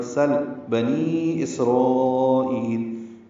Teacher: سین کو لام سے ملا دیں گے اظہار لام پہ، قلقلہ نہ ہو، سل نہ پڑے، سل بنی اسرائیل۔